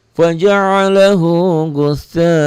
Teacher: A-nya yang dua harokat, gusanya tetap ya 5 harokat karena mad wajib muttasil, berarti dua hukumnya.